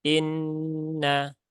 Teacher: Nah, setelah itu di sini ada nun bertasdid ya. Nun bertasdid ada gunnah musyaddadah. Maka tunaikan taronumnya ya. Jadi tunaikan taronumnya ditahan 3 harokat.